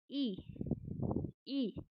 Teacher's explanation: ई बोलते समय जो हमारी जिह्वा का आगे वाला भाग है वो उठ रहा है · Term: अग्र स्वर